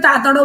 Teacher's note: ક ના બદલે લોકો ત બોલે એટલે તમારે કાગડો બોલવાનું હોય તો એ તાતડો બોલે બરાબર એટલે